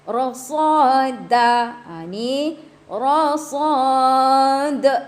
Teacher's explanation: Dia menjadi mad arid disukun dan ada sifat qalqalah di hujungnya ya. Ada beberapa huruf yang mempunyai sifat qalqalah, sifat melantun ya.